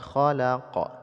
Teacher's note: apabila sukunnya karena waqaf maka disebut dengan Qalqalah kubra jadi pantulan suara nya lebih besar